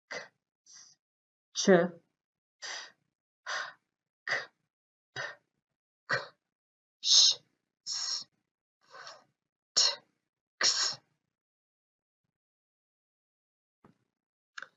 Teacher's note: Put your hand on your throat as you repeat them after me. You should not feel any vibration with these sounds. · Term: voiceless sounds